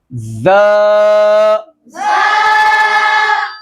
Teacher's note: इसमें सीटी की आवाज भी आएगी और सख्ती की आवाज भी आएगी, सख्ती से पढ़ना है।